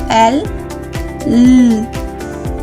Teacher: Kapag sinabi nating panggilagid, ang ibabaw ng dulong dila ay lumalapit o dumidiit sa puno ng gilagit